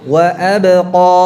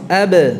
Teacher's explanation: ba-nya tidak terpengaruh dengan tebalnya bunyi qafnya. Jadi ba-nya tetap tipis